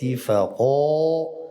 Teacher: و تا را متوجه باشیم باشیم باشیم الملائیکتی فق فق فق این مد طبیعی پر به خاطر اینه بعد از قاف واقع شده و قاف حرف استعلاست